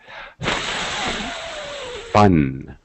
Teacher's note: my top teeth on my bottom lip, and I just breathe